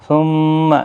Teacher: میم مشدد پر بھی گنہ ہوگا، یہاں پر بھی اور یہاں پر بھی۔